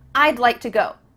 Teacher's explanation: we're cutting off all the sounds in the word wood except for that final D